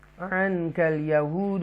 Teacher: نون ساکنہ کے بعد اقفا لیٹر قاف ہے, لہذا گنہ کریں گے